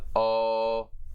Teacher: the back mid rounded vowel